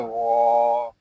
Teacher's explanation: یہاں غین حروف مستعلیہ میں سے ہے، اس کو پوری یعنی موٹا پڑھیں گے